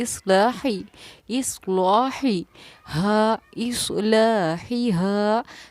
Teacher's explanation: اب جب میں ہا پڑھ رہی ہوں تو بالکل حلق سے صاف ظاہر ہو رہا ہے